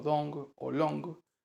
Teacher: La O final, como en wo y wo, como en luo, se pronuncia de manera muy similar a la O final española, como en liso, ong, como dong o long. Mantiene el sonido on, pero con un cierre gutural final que lo aproxima al sonido ung